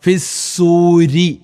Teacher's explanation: ഫിസൂരി ഒരിക്കലും റി എന്ന് വായിക്കാൻ പാടുള്ളതല്ല റാഇന് കസർ വന്നു കഴിഞ്ഞാൽ അറബിയിൽ റഇന് കസർ വന്നു കഴിഞ്ഞാൽ രി എന്നാണ് ഉച്ചരിക്കേണ്ടത് ഒരിക്കലും റി എന്ന് ഉച്ചരിക്കാൻ പാടുള്ളതല്ല